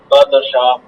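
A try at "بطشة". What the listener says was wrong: বাতশা, বাত মোটা হবে, বাতশা। বাত দাল হয়ে গেল তো, দাল হবে না, ত হবে, বাতশা। বাদেশা না তো, এটা বাংলা হয়ে গেল তাইলে। ত, ত, তর উচ্চারণই মোটা। আপনি কি প্রথম দ্বিতীয় নাম্বার পৃষ্ঠায় পড়ানো হয়েছিল যে মোটা হরফ 7টি। সদ, দ, জ পড়েছিলেন, গইন, খ, কফ, 7টা হরফ মোটা। এই যে এর মধ্যে একটা ত আছে, বা ত সা।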